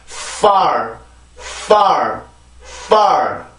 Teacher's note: 윗니빨과 아랫입술이 닿아서 만드는 순치음이고요. 마찰 형식으로 소리가 내요. 어떤 그 강사들이 이 F 발음을 할 때 윗니빨로 그냥 아랫니빨을 눌러 막아주라고 얘기를 해요. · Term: 순치 마찰음